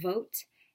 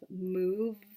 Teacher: the voice sound v, as in the beginning of vote and the ending sound of move